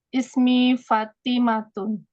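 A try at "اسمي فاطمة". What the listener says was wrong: Naam, Ahsanti.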